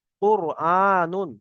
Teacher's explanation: মুখটা গল হচ্ছে রটাকে পুর করে পড়তে হবে কফ র পেশ কুর হামজা খাড়া জবার আ নুন দু পেশ